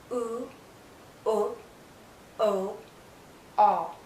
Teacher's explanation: can't see my tongue because the highest point is the back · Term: back vow sounds